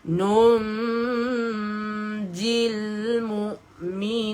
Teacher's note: kita dengungkan sahaja nun kosong dengan huruf jim. Dengung sahaja.